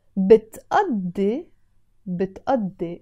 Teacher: this قاف is pronounced as a همزة